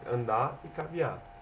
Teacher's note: é o desuso do som da letra R, em palavras que terminam com R, ou seja, o R sempre muda no fim de palavras, como andar e caviar, que se torna andar e caviar.